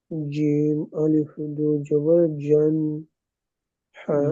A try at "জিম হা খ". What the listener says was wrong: তা সা এদের থেকে জিম হা খ আরো একটু বেশি টান হবে, তাই না? জি, যে অক্ষরটা যেরকম টান ওই রকম টান দিয়ে পড়েন।